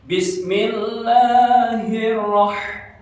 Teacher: Jadi H kecil itu suaranya agak mendesah gitu ya.